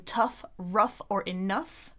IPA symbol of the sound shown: ʌ